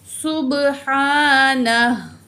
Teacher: सुब्हानहु, तो यहाँ पे वक्फ़े लाजिम है, रुकना लाजमी है, तो इसलिए हम क्या करेंगे, यहाँ रुकेंगे और यहाँ जो उल्टा पेश है हा के ऊपर ड्रॉप हो जाएगा, हा को हम साकिन पढ़ेंगे।